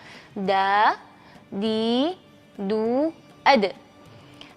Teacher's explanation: huruf Dal ini memiliki sifat jahr dan syiddah kurang lebih sama seperti huruf ba yaitu tahan nafasnya dan tahan juga suaranya